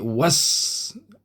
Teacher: Cuma bunyi was. Jadi alif lam tak bunyi langsung. Terus bunyi was.